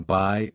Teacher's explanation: Diff thongs. These are vowels that start in one position and glide into another